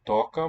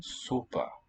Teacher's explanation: listen to the different O qualities here. Toca, more open. Sopa, more closed.